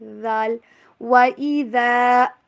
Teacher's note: وَإِذَا، وا کے اوپر ہونٹوں کو گول کرنا ہے، اور ذال کو آپ نے سختی سے نہیں ادا کرنا، بہت ہی نرمی کے ساتھ زبان کی نوک اوپر والے دانتوں سے تھوڑا سا باہر